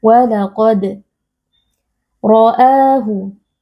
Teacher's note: Walaqad, ada qalqalah sughra karena ada huruf dal yang posisinya ada di tengah-tengah kalimat. Cara membacanya kita memantulkan bunyi huruf dal sukun